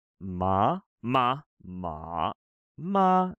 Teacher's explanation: the sound ma can be said with a rising ma a falling ma like a lute ma or a flat tone ma right ma